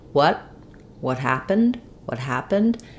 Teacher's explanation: happened because the H is a consonant sound what what happened I'm using an unreleased T here so I'll go up to make the T · So I'll go up to make the T, what happened, and then I'll just release into the H of happened